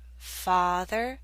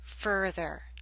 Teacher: the a in Father makes you open your mouth more